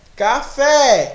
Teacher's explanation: olha lá o fé ele vai lá no alto então essa sílaba mais forte eu vou chamar de sílaba tônica